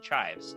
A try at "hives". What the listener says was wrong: you put on the under potato. No C. Hives.